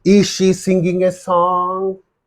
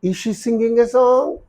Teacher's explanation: Because it's a question, interrogative sentence, rising tone. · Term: rising intonation